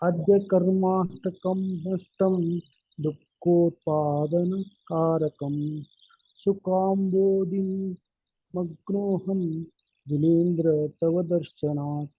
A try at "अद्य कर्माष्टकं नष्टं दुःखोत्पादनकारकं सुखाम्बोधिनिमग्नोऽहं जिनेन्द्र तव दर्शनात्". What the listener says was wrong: उत्तम।